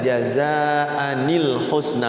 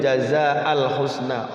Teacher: yang huruf-huruf yang akhirnya tanwin itu ketika bertemu dengan huruf alif maka rubahlah si tanwin jadi Nun kecil